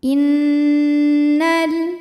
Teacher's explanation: lam yang sukun tidak dibaca sehingga kita langsung masuk ke lam kedua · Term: alif lam syamsiah